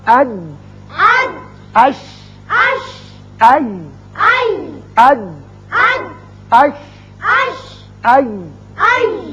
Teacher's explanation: زبان کا درمیانی حصہ جب سامنے والے تالو کے درمیانی حصے سے لگتا ہے چپکتا ہے تو یہ تینوں حروف ادا کیے جاتے ہیں۔